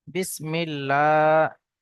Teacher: এখানে আল্লাহ শব্দের পূর্বে জের এসছে, তাই আমরা আল্লাহ শব্দটাকে বারিক করে পড়ব। · এখানে মিম টান হবে, খারা জবর আছে, আলিফ মাদ্দার মতো একালি পরিমাণ টান হবে। এখানে ইয়া সাকিনের পূর্বে জের এসছে, ইয়া মাদ্দা, একালি পরিমাণ টান হবে।